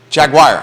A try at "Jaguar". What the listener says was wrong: Sounds like you're saying it like wire. Jaguar. Jaguar. The long war. Jaguar.